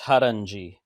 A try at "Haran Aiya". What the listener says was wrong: Well, not G, Haranaya. Haranaya. yes, and we call him, he's affectionately known as Haranaya.